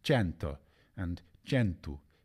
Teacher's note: a more open e sound in cento and centu in northern Italy and Sicilian